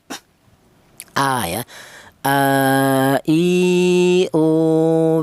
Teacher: Huruf hamzah ini keluarnya huruf berasal dari tengah eh berasal dari pangkal tenggorokan ya. pangkal tenggorokan itu tenggorokan bagian bawah ya atau huruf halaq ya.